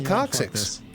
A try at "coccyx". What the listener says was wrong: It doesn't have the extra K sound, but it's a weird pronunciation. From the way you're saying it, sounds like you're saying cock six, right?